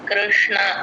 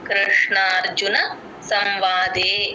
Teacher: ష కింద నా కూడా క్లియర్ గా వినిపించాలి